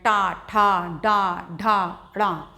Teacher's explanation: आपने महसूस किया होगा इनको बोलते समय जो जिभ्या है वो थोड़ा फोल्ड हो के और तालू के और ऊपर तो जो तालव्य से ऊपर का स्थान होता है हमारे मुख के अंदर वो बोलते हैं उसको मूर्धा या मूर्धन्य तो हमारी टंग फोल्ड करके मूर्धा का स्पर्श करती है